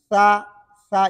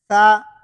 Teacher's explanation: پشت زبان ہے، یہاں سے نہیں ادا ہوگا بلکہ زبان کی نوک ہم دانتوں کے نوک سے لگائیں گے اس طرح ثا. اور اس میں یہ آواز ضروری ہے، یہ صفت ہمس ہے.